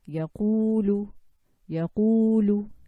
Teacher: This oo sound coming from al-jawf.